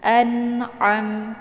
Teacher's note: Ini ain ya, letak posisinya di tenggorokan bagian tengah.